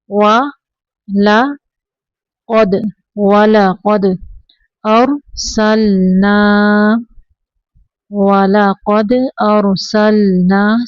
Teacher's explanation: سل نہیں پڑھیں گے، لام کو کلکلا نہیں کرنا